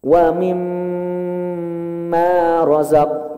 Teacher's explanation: Kalimat mimma itu mim bertasydid. Ini adalah tingkatan gunnah tertinggi. Maka di sini harus ditahan, Pak.